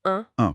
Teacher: ce n'est pas du tout comme le won anglais, c'est un son nasal